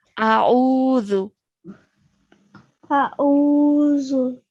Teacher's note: Now at the beginning over here, just make sure that you're saying the alif separate and then the ayn separate to that, okay? So don't merge the two sounds together.